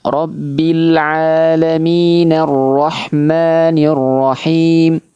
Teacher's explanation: Hamzahnya tidak dibaca lagi karena kita menyambung di situ. Tapi kalau kita mulai di situ maka hamzahnya dibaca arrahmanirrahim. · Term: hamzah wasal